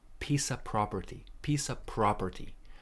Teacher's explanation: we don't have this uh F so it's not off it's just a pie of property pie of property property stress on the first syllable property pie · we don't have this F, so it's not off, it's just a.